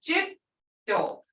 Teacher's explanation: So you say jitto, and you don't hear that D as clear because your tongue is on top of your palate.